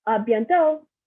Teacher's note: Not pronouncing the T at the end.